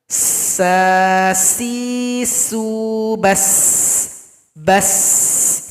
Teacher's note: Ada aliran yang mengalir, suara kita mengalir, itu rokhwa. Berikutnya juga bersifat istifal dan juga infitah.